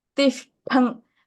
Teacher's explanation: Ish and Tha, both are Mahapranas